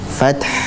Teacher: kata al-fath hendaklah kita baca langsung lari ke ha. Fath, bukan fatah, bukan, tapi fath.